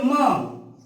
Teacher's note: इस म का पहला उच्चारण स्थान है औष्ठ, और औष्ठ के साथ साथ म का उच्चारण नासिका से भी किया जाता है